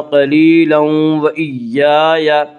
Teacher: قلیلا وإیای میں ادغام مع الغنہ ہوگا